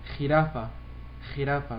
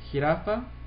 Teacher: بإسبانيا مثل الخاء، وهنا باللاتين أمريكا مش كتير قوي